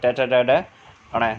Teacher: ट वर्ग का उच्चारण स्थान मूर्धा होता है।